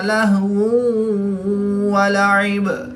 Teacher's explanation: دو پیش کی تنوین کے بعد واو حروف یرملون میں سے ہے، تو یہاں پر ادغام مع الغنہ ہوگا، یعنی ادغام کے ساتھ غنہ کر کے پڑھیں گے۔